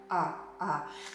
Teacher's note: This is a retroflex ra sound. It's kind of like if you make an R in an American way, like hard, and then you pull your tongue a little bit further back.